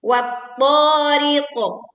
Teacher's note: memantulkan huruf qaf sukun karena berwaqaf dengan suara yang tebal. Wat-tariqo, bukan wat-tariq, bukan ditelan atau miring menjadi wat-tariq.